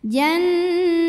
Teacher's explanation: Nun dibaca panjang boleh dua boleh empat boleh enam harakat asal konsisten dalam sekali bacaan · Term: madid lukun